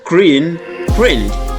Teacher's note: And clean, cleaned. N is voiced sound N. So voiced and vowel followed by ed, we pronounce D.